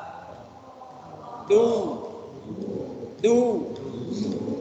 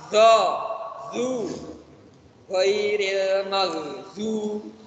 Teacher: tempatnya pinggir lidah bertemu dengan gigi geraham atas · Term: dod